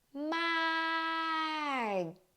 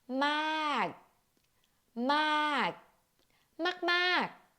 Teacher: First of all ค่ะ when กอไก่ or K as ending, you do not release the final sound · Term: glottal stop sound